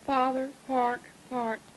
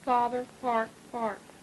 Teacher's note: you've got about a half retraction. In other words, your R is about half pronounced